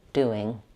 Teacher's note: Watch the NG in doing. Make sure that you don't say doin', but rather lifting the back of the tongue.